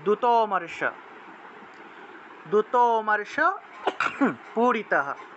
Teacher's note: দূত এবং অমর্শ এই দুইটা শব্দকে একসাথে উচ্চারণ করতে হবে কারণ এই যে এখানে অ যে উচ্চারণ হয়েছে এটা আসলে পূর্ণ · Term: লুপ্ত অ